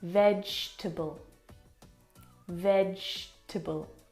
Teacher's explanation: We don't pronounce that second syllable.